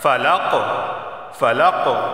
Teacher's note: قلقلہ ہوگا ادھر، یعنی آواز مخرج سے ٹکرائے گی